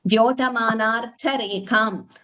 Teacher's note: that ta should be heard as ta only, not nearing da also